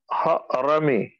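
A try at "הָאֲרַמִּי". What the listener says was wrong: You notice how you separated the sound of the ha and the ah? You did not say ha-rami. You said ha-ah, right? Correct.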